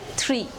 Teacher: The 11th is the Th, as in three. It is described as a voiceless dental fricative consonant.